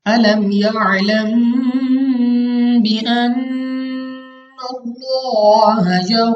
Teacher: क्योंकि मीम साकिन के बाद हर्फ बा आ गया है, जिसकी वजह से हमारे पास यहाँ पे इक़लाब होगा, यानी हम यहाँ पे गुन्ना करके पढ़ेंगे, ठीक है। यहाँ पे आपने ये बात याद रखनी है कि यहाँ पे इख्फा का कायदा नहीं है, क्योंकि हरूफ इख्फा में बा नहीं है, ता से हरूफ इख्फा शुरू होते हैं, और 15 हरूफ इख्फा में से बा हरूफ इख्फा नहीं है।